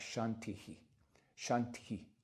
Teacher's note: you kind of whisper that vowel again